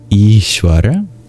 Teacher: The S with the accent above it in Ishvara, It's like the regular palatal sibilant sha, symbolized by the diagram SH in English.